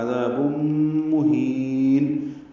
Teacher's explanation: تنوین کے بعد میم آنے کی وجہ سے ادغام ہوگا، ادغام ناقص غنہ ہوگا · ہا کو لمبا کریں گے اور نون ساکن پہ وقفاً اظہار کریں گے